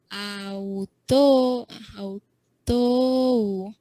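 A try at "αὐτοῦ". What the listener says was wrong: And read that omicron upsilon. That's also a diphthong. That right there, omicron upsilon. That's pronounced as oo, autu.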